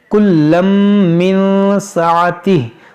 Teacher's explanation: इदगाम करेंगे, तनवीन के बाद मीम है